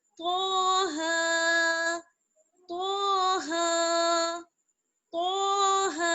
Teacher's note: تو کو موٹا پڑھیں گے، ہا کو باریک پڑھیں گے. تاہا نہیں پڑھیں گے، تاہا غلط ہو جائے گا.